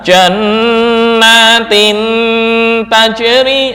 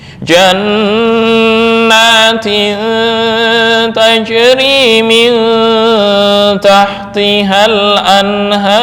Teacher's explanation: ikhfa lebih mendominasi daripada ghunah